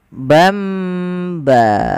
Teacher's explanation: Apabila kita mendapati di dalam bacaan Al-Quran kita, teman-teman, ada nun sukun atau dia tanwin an, in, un, bertemu setelahnya satu huruf saja, yaitu huruf ba, maka nanti suara nunnya dirubah atau suara tanwinnya dirubah menjadi mim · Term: iklab